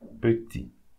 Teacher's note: Petit, we don't pronounce the T.